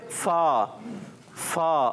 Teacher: नीचे वाले होंठ का तर हिस्सा जी, नीचे वाले होंठ का तर हिस्सा और जबान ऊपर के दांत, ऊपर के दांतों का, ऊपर के दांतों के किनारे। जब ऊपर के दांतों के किनारे लगते हैं और नीचे के होंठ के तर हिस्से से लगते हैं तो अदा होता है फा